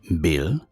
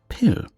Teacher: By the way, voiced means using the vocal cords. For example, in the English word bill versus pill, the B is voiced, the P is unvoiced